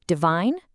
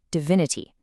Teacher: Divine becomes divinity. That shift from that long I to a short I is another one of those automatic adjustments.